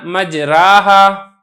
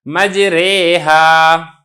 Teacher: دونوں کے درمیان میں اس کو اس طریقے سے جھکا کے یا کی طرف ملا کر مائل کر کے پڑھنا ہے · میں نا مجرا تھا، را کے اوپر کھڑی زبر تھی، تو الف کو ہم نے یا کی طرف، زبر کو ہم نے زیر کی طرف مائل کر کے پڑھا ہے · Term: امالہ